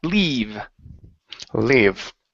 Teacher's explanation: Let's practice the long E sound here. Instead of live, it's E, leave.